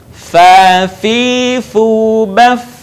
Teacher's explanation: Huruf fa keluar dengan menyentuhkan ujung dua gigi seri bagian atas dengan bibir bawah bagian dalam. Diucapkan dengan mengalirkan suara sekaligus dengan udaranya dengan lembut.